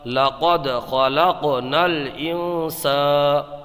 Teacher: قاف میں قلقلہ ہوگا کیونکہ قاف حروف قلقلہ میں سے ہے، اور جب حروف قلقلہ ساکن ہو تو ان میں قلقلہ خوب ظاہر ہوتا ہے۔ یہاں پر نون ساکن میں اخفا ہوگا کیونکہ نون ساکن کے بعد حروف اخفا میں سے سین آیا ہے